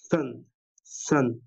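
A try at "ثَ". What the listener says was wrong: অনেকটা সিনের কাছাকাছি শোনায়। সিন এবং সা। জিভ আরেকটু বের করেন, আরেকটু বাতাস বের করেন। যতটা পারেন সম্ভব জিভ বের করে বাতাস বের করেন। তো বাতাসে জিভ বের করতে হবে। ১ম দিকে মনে হয় জিভটা ভেতরে থাকছিল। যদি ভিতরে থাকে তাহলে আমাদের অনেকটা সিনের মতো হবে। সিন আরেকটা সা।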